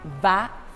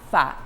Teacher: O V é um fonema sonoro e o F é um fonema surdo. Tem o mesmo ponto de articulação na boca. Por exemplo, se eu fizer assim, ó, vá, fá, sem emitir som, você não vai saber o que eu estou falando.